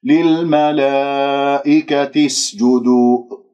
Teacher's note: والسين يجري فيها صوت والنفس من أحرف الصفير